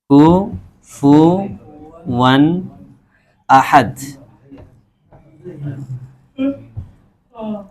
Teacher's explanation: बिल्कुल तनवीन को क्लियर करके। उसमें जरा भी गुनना और आवाज को रोकना, गुनगुनाना कुछ नहीं होगा उधर। इज़हार करना। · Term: इज़हार